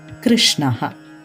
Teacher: the consonant sound shu joins with the consonant sound na it forms a new consonant sound called shna